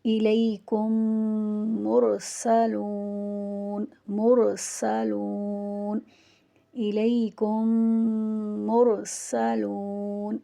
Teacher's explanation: اس مثال میں پہلے میم کو پڑھتے ہوئے دوسرے میم پر شد لگا کر پہلے میم کے ساتھ پڑھیں گے · میم ساکن کے بعد جو میم ہوگا اس پر ہم تشدید لگا دیں گے اور اسے ہم ادغام شفوی کہتے ہیں، اور یہاں غنہ بھی ہوگا۔